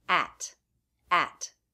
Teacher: On its own, it has the a as in bat vowel and the true T